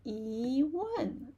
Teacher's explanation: E change to rising tone, right?